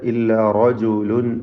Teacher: മാ ഹാദാ ഇല്ലാ റജുലുൻ യുരീദു, അവിടെ ഇല്ലാ റജുലുൻ റായിന് തഫ്ഖീം കൊടുക്കുക, തടിപ്പിച്ച് റാ ഉച്ചരിക്കുക. റജുലുൻ എന്ന തൻവീനിനെ യായിൽ ഭാഗികമായി ലയിപ്പിച്ച് മണിക്കുക.